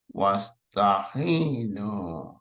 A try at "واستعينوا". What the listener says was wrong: Yeah, so it's an ayn. It's not a ha. I'm hearing you say ha, but I want to hear the ayn.